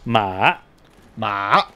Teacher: there's the falling rising tone